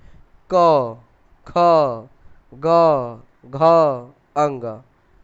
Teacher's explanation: कभी भी आप क से लेकर अंग तक पढ़ेंगे तो आपको कंठ पे दबाव पड़ेगा